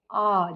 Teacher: जब आप आ बोलोगे तो आपका पूरा मुंह खुलेगा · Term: विवृत स्वर